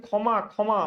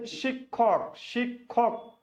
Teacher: এটাকে উচ্চারণ করছেন খ। শব্দের প্রথমে বসলে খ আর যদি শব্দের মাঝে বা শেষে বসে তাহলে উচ্চারণ হয় কি? ক খ